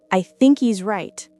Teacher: The H of he is gone, and the word think links right into is. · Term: elision